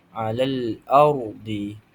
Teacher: ra' tafhim ini bacaan huruf ra yang dibaca secara tebal